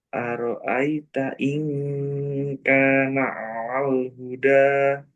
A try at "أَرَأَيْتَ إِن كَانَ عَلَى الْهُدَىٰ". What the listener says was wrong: Alal, alal huda. Kurang jelas alalnya. Ala, a. Coba a. Ala. Alal. أرأيت إن كان على الهدى.